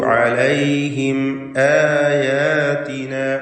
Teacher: താ തത്ലൂ അലൈഹിം ആയാതിന അലൈഹിം എന്നതിലെ സാക്കിനത്ത് അമീമിനെ ഇൽഹാർ ഷഫവി ചെയ്ത് മണിക്കാതെ വെളിവാക്കണം.